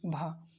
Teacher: हिंदी की स्पर्श घोष महाप्राण औष्ठ्य व्यंजन ध्वनि है